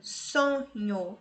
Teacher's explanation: a penúltima sílaba é mais forte. Ela é paroxítona.